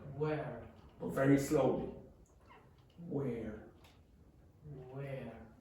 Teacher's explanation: You notice you don't touch the teeth with the lips.